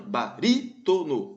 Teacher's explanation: beleza vamos lá letra A barítono barítono é uma proparoxítona baritono antepenúltima sílaba bem mais forte